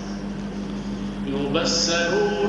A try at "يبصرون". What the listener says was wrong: يبصر يبصر فخم الصاد